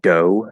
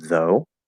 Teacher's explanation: using a D sound in place of a TH, not a dental D, but like a full D sound, saying like dough instead of though, that is something that everybody, well, not everybody, but most people, West, Middle, British, most people are going to look at that as uneducated.